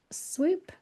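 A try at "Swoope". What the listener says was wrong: Well, it looks like swoop, but it's pronounced swope for some reason. I don't know what the background of that is, but normally two O's are oo, as you know, but in this case, the two O's are a long O.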